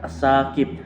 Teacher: al-syamsiyah karena ada huruf al bertemu dengan huruf sa, jadi membacanya dimasukkan